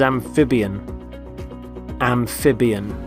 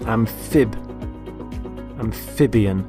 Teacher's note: Notice the stress on the middle syllable